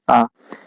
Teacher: इसके उच्चारण में मुख सबसे अधिक खुलता है। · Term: विवृत स्वर